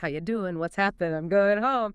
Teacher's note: So instead of doing with the sound in sing, yeah, it's more like doing with a sound in sin.